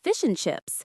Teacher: The and is reduced to just an N sound.